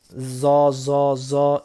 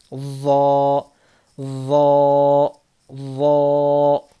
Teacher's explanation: زبان کی نوک دانتوں کے بیچ میں سے باہر نہیں نکلنا، زبان کی نوک کو سامنے کے دانتوں کے کنارے پر لگانے سے وا ادا ہوتا ہے